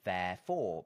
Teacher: most people would say that the accent is on the second syllable so it's therefore but it's still a in the first syllable